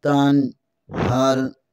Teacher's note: नून साकन के बाद हा हरूफ हल्की में से है, इसलिए यहाँ गुन्ना नहीं इज़हार होगा।